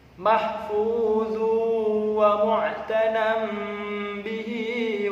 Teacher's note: ada tanwin bertemu huruf wawu, harus dibaca idgham bi gunnah, memasukkan suaranya tanwin ke huruf berikutnya